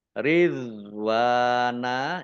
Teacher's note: Ridwana, ya dok sukun, bukan kol-kolah, jangan dipantulkan. Jangan dibaca ridwan, ya, tapi dibaca ridwana.